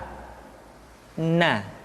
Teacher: Caranya menyentuhkan ujung lidah kita di antara posisi ro dengan la. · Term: huruf na